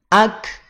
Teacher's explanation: pada saat mengucapkan huruf kaf, kadar aliran napas itu tidak mengalir seluruhnya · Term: hams